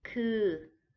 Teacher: Next, to be, คือ it's the same sound. So a little bit e, a little bit u, คือ, and that is a flat mid-tone.